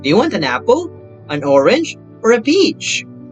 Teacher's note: long rising intonation of these tone units yields a highly dramatized style often used when addressing children